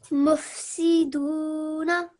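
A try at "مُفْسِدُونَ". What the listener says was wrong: Beautiful. Well done. Very nice. Nice elongation there. Excellent.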